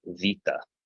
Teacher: The kind of Greek pronunciation you hear in church, it actually makes a V sound. So the pronunciation for this word would be vita.